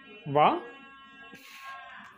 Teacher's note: అంటే ఆ వాయిస్ బయటికి రాదు గాలి వస్తుందన్నమాట వ సో ఇది లిబియోడెంటల్ లిబియోడెంటల్ అంటే lower lip against the upper teeth lower lip touches against the upper teeth upper teeth కింద కింద ఉన్న లిప్ కి టచ్ అయి ఈ సౌండ్